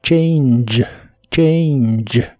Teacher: La A se pronuncia como EI y la G del final se pronuncia como Y, que es como una che vibrante, pero como no hay letra para escribir este sonido en español, te la pongo como CH, que es algo similar.